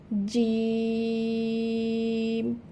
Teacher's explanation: জিহবার মধ্যখান হইতে তার বরাবর উপরে তালুর সাথে লাগাইয়া জিম উচ্চারিত হবে। জিম, এবং এটি একটু শক্ত করে উচ্চারিত হবে।